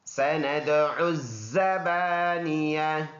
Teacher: فلیدع نادیہ سندع الزبانیہ، سین سیٹی والا حرف، دال میں قلقلہ ہے، اور عین اور زا کو پڑھیں گے ایک پیش کے ساتھ، بیچ میں الف اور لام کو نہیں پڑھیں گے، یہ الف مدہ ہے، اور ادھر وقف کریں گے تو یہ تا ہا میں کنورٹ اور اس کا زبر سائلنٹ۔